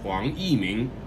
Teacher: Huang, second tone. Yi, fourth tone. Ming, second tone.